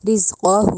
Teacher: رز میں جو زا ہے اس کو سختی سے ادا کرنا ہے، زال کی ساؤنڈ نہیں دینی، رز نہیں کہنا، رز، ٹھیک ہے، زا کی ساؤنڈ آئے، رزقہ، قوف جو ہے اس کو موٹا کر کے ادا کرنا ہے، کہو نہیں کہنا، ڈنڈے والی کاف نہیں بنانا، ٹھیک ہے، رزقہ، اس طرح پڑھیں گے۔